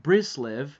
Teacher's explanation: Ashkenazi Hebrew, which instead of the t sound, you have the s sound in a lot of Hebrew words